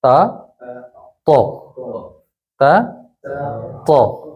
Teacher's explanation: تو میں زبان ذرا چپک رہی ہے تالو سے